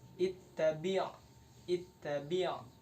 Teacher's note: untuk makhorijul huruf ba yakni dua bibir dirapatkan